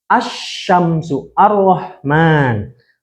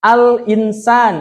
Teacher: kalau alif lam Syamsiah itu lamnya nggak dibaca lah, seakan-akan nggak dibaca. Langsung ke huruf selanjutnya.